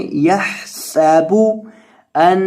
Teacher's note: ہا کو حلق کے بیچ سے ادا کریں